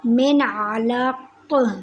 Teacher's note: من علق، اب میں نے نون ساکن پہ اظہار کیا، میں نے نون ساکن پہ غنہ نہیں کیا، نون ساکن کو میں نے ظاہر کر کے پڑھا، غنہ نہیں کیا · من علق، نون ساکن کے بعد عین آ گیا ہے، نون ساکن کے بعد عین آ گیا ہے۔ عین حلق سے ادا ہوتا ہے، اس لیے عین حروف ہلکی میں سے ہے، تو اس نون ساکن پر اظہار کا قاعدہ ہوگا۔